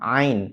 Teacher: huruf Ain ini tempatnya adalah tenggorokan bagian tengah